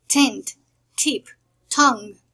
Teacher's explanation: In the alveolar sounds, we have the voiceless alveolar plosive, t, t, like tent, tip, tongue.